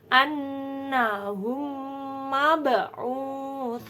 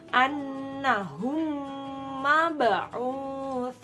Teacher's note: Di sini ada mim sukun bertemu dengan huruf mim. Maka cara membacanya harus mendengung ditekan 2 harokat. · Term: idgham mimi